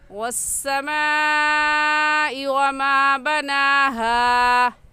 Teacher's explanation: तो ये मद्दे मुत्तसिल है क्योंकि हरूफ मद्दा के बाद हमज़ा इसी कलमे में है, इस वजह से इस मद को मद्दे मुत्तसिल और वाजिब कहेंगे। और इस मद को 4 अलिफ के बराबर खींच कर पढ़ेंगे